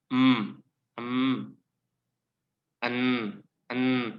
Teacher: enan itu dari alveolar tadi ya, di belakang gigi sedikit. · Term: nasal, bunyi hidung